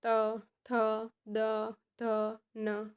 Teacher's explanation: બે દાંત ભેગા થઈને જે વર્ણ બહાર આવે છે તેને દંત્ય કહેવામાં આવે છે